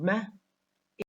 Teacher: with the nasal consonant now the phonemic description of man is voiced bilabial nasal or nasal stop · voiced because the vocal cords are vibrating when it is produced man is bilabial because it is produced when the lower lip and the upper lip are completely closed we use both upper and lower lips when we produce men